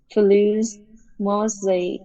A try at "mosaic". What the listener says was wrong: Sai, nó là hai âm nè. Fluid mosaic model. Fluid mosaic model.